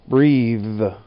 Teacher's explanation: This one was a little tougher because the TH in breathe uses your voice while the other THs don't